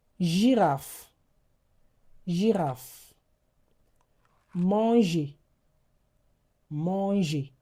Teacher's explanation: Now, let's talk about the soft G. The soft G sounds like zh.